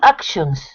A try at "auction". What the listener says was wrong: Auction. You got to be careful because, of course, it's the ah sound. It's action, like action movies. more of an auction.